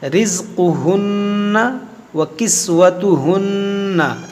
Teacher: یہ نون مشدد میں غنہ ہوتا ہے